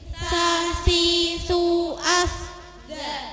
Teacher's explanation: Posisi di antara punggung lidah dan pucuknya dua gigi depan yang atas, mulut yang tipis dan suara yang ringan mendesis.